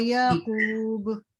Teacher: اب یہاں رکیں گے نا تو با پہ سکون بن جائے گا، تو اس پہ بھی قلقلہ ہوگا